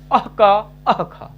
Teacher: क और ख से पहले ऐसा अर्ध विसर्ग, ऐसे क ख, ये जिह्वा मूलीय, इनका उच्चारण स्थान जिह्वा मूल है। क और ख इनका उच्चारण स्थान जिह्वा मूल है।